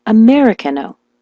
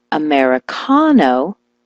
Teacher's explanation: switch the stress to the ca